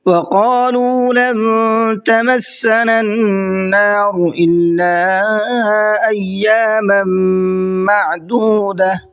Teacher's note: وقالوا، قاف کو منہ بھر کے پڑھنا ہے اور لام کو کھینچ کر کے پڑھنا ہے، اس لیے کہ یہاں پر واو مدہ ہے، واو ساکن سے پہلے پیش ہے تو اس کو کھینچ کر کے پڑھیں گے۔